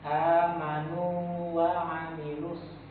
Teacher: Jangan sampai terjadi idgham, jangan sampai masuk ke huruf waw. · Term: mat tamkin